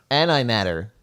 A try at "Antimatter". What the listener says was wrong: No, don't say T's very well, do they? It's like D's instead of T's, isn't it?